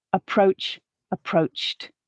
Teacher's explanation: we're not adding in an extra syllable but we have a voiceless sound at the end of the bass form which leads our past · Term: t sound